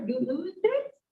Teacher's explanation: sort of with that rising intonation, question intonation